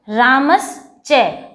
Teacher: तो ये इसके च वर्ग वाला जो होगा वो शलगम वाला शा होता है, यानी कि तालव्य शा होता है